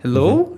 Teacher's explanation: Hello, you see, this is, or hello, you see, and you can understand that there's a difference, that this is kind of falling tone, and that one, hello, is just rising, and it's like a question